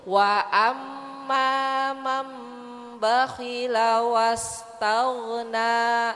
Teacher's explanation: Jadi merubah suara nun mati atau tanwin menjadi suara mim. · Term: Iqlab